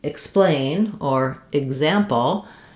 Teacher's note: when the letters EX are unstressed, like in explain or example, they will have the I sound rather than the sound, because letter E is, when it's unstressed, is often the I sound.